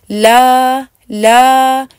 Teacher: ला वाले हिस्से में आपकी गुन्ना की आवाज नहीं होनी चाहिए तो वहां तक आप अपने नाक को पकड़ कर रखें और